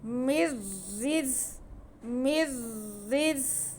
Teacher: بعد را آ رہا ہے، را حروف ادغام میں سے ہے، ادغام بلا غنہ یعنی کہ غنہ نہیں ہوگا لیکن ہم نون کو را میں ملا کے پڑھیں گے